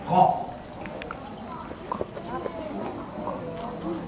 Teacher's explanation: huruf q itu pangkal lidah bagian belakang kita menyentuh dengan langit-langit